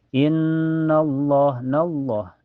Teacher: cara bacanya ditahan sekitar dua ketukan saja · di lafaz Allah ini dibaca tebal ya, dibaca tafhim karena sebelumnya berharokat fathah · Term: gunah musyadah